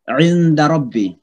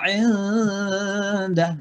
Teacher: Samar-samar nunnya. Jadi nun seolah-olah masuk ke dal. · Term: ikhfa